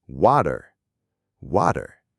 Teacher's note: So instead of saying w with that hard puff of air, an American speaker's tongue quickly flaps against the roof of their mouth. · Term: flap T